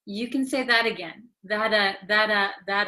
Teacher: okay because it is between an A and another a so when a t comes between two vowels in American English it um becomes like a soft D sound